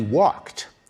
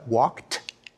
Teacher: past tense suffix ed is actually pronounced in three different ways when we say he walked we pronounce the ed like a t